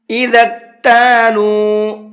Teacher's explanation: ذال کو کاف میں ملائیں گے اور بیچ میں یہ جو دو الف بنے ہوئے ہیں یہ الف نہیں پڑھے جائیں گے اور لام کو کھینچ کر کے پڑھیں گے